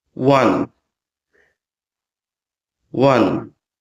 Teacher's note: it's written as W then followed with the schwa vowel sound